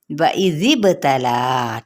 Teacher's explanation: لا کو 4 حرکات کے برابر کھینچے